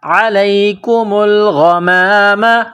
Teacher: جس طرح انسان گلے سے بلغم نکالتا ہے اس طرح اس غین کو پڑھیں گے